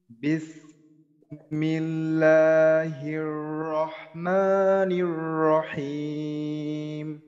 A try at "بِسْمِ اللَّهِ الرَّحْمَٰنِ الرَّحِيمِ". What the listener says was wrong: সফিরের উচ্চারণটা আপনার এই উচ্চারণটা যজদমের সময় স্পষ্ট রাখতে হবে। বিসমিল্লাহ, বিস, বিস।